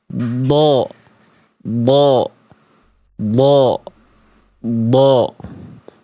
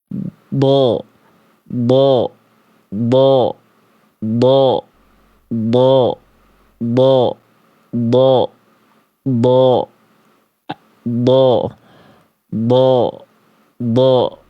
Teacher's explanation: Pangkal lidahnya naik biar bunyinya tebal. Jadi makhrajnya aktif, pangkal lidahnya naik. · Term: huruf dod